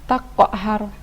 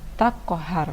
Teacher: Ia adalah Qalqalah Sugra karena berada di tengah-tengah kalimat atau bacaan Hai Jadi bukan dibaca takok harus tapi tak kohar